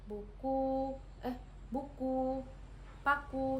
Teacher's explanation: vokal U tinggi atas belakang dengan posisi mulut tertutup. Nah, pada vokal U yang ini menghasilkan contoh kata seperti buku eh buku paku seperti itu.